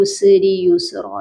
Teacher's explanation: دونوں سین پر سیٹی کی آواز آئے گی، قلقلہ نہیں ہوگا